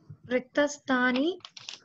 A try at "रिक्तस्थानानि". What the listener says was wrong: Rittasthanani not sthani Rittasthanani